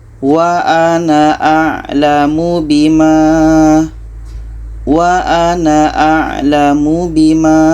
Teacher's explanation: Seterusnya dalam ayat 1 surah Al-Mumtahanah, di sini ada sifir mustatil, bermakna na ini pendek ketika wasal atau ketika disambung